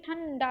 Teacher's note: तो अनुस्वार किसे कहते हैं? अनुस्वार के उच्चारण में वायु नाक से निकलती है और उच्चारण झटके के साथ होता है।